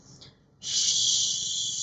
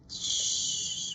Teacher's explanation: Nah, ini kan tidak ada yang bergetar sama sekali gitu ya. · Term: voiceless